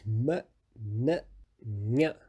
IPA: m n ɲ